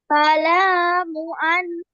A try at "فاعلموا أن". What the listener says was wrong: ফালামু বললেন কেন? ফা আইনটা কি গলাটা চেপে বলতে হবে না?